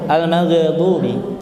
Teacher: huruf ghain dan tidak mempunyai sifat qalqalah. Al-maghdubi.